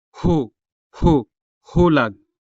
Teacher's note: This consonant ha sound is prominent when found at the beginning of a native Hiligaynon word